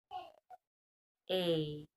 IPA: e